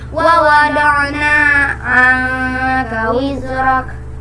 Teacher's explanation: Cara membacanya samar dengan dengung dan ditahan selama 3 harokat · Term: ikhfa